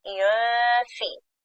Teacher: the hunna here will be with the lower lip touching the upper incisors, yunfi, because you're ready to pronounce fa.